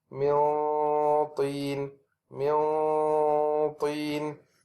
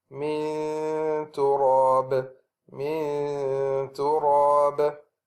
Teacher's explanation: So we can see that we are still touching the place of the ta, dal, or ta, but it is very light touch. So the ikhfa of this will be weak because the tongue will be far from the makhraj of the dal, ta, and ta